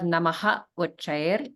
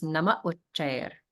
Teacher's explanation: the visarga will drop off completely and you'll just have nama.